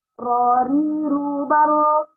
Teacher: Nah, punggung lidah, tapi si ujung lidahnya bergetar, namanya at-takrir, ikrar. Ya, terjadi pengulangan.